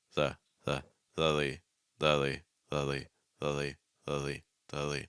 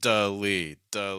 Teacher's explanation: I'm keeping my tongue down, tip my tongue down, and just kind of raising and lowering the middle of it or the back of it a little bit. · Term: fast D